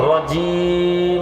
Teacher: জিম জিহ্বার মধ্যখান থেকে উচ্চারণ হবে